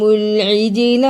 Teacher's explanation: جیم پہ قلقلہ بھی کیا، لام کو جلدی بھی پڑھا